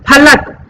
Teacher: इसको दोनों होठ को मिला करके इसका फ का उच्चारण करना है